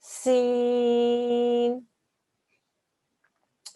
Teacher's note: a slight whistling sound, very, very slight whistling sound